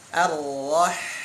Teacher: Dari tengah tenggorokan, ya. Wasatul hal, tengah tenggorokan. Ha, ar-roh, alirkan. · Dia punya sifat jaroyanus saut wa jaroyanun nafas, berjalan suara, berjalan nafas. Roh, berjalan nafas itu hams, berjalan suara itu rikhwah, rohwah, ya.